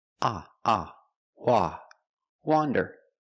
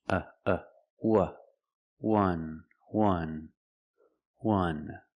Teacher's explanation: we have the first word wander with the open sound like hot and stop. And we have the second word wuh, wonder with a closed short sound like cup and up.